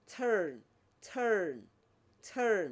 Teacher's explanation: Wherever R appears, they pronounce R. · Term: rhotic